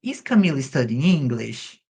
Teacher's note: a entonação, ela é mais acentuada na última palavra de sentenza